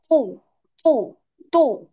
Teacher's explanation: কিন্তু এইটা যখন তু বলবো, তু, তু, তু। মুখটা কি একটু গোল, আর আওয়াজটা তু কেমন একটু মোটা তু মোটা